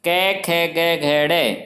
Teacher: अब ये व्यंजन जब हमारे कंठ से टकराकर बाहर आते हैं, इसलिए इन्हें कंठ्य प्रकार के व्यंजन कहा गया, कि इनका उच्चारण स्थान कंठ्य है।